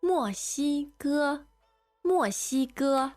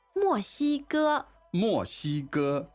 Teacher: So, one fourth tone and two first tones.